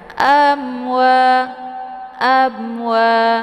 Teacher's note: ada mim sukun bertemu dengan wau ini dinamakan dengan izhar syafawi jadi mimnya dibunyikan secara jelas dengan cara ditekan saja tidak perlu ditahan amwa abwa ya Wa dibaca panjang dua harakat karena ada Alif · Wa dibaca panjang dua harakat karena ada Alif sebelumnya harakat fathah